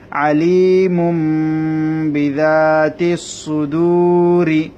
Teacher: বিদাতিস সুদূরি তাহলে দেখুন তানবিনটা কি হয়ে গেল মিম হয়ে গেল যেহেতু তানবিনের পরে বা এসেছে সেজন্য তানবিনটা মিম হয়ে যাবে